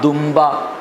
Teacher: حالانکہ دن با لکھا جاتا ہے لیکن فوراً سے آپ میم سے بدل دیتے ہیں